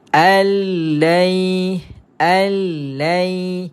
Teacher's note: memasukkan saja sebutan tanpa dengung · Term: Idam Bila gunah